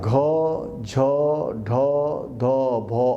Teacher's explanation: Bahya prayatnas of gha, jha, dha, dha, bha are mahaprana, samvara, nada, ghosha